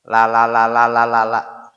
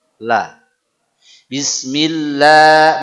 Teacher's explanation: kita punya lam Arab Dia sedikit tebal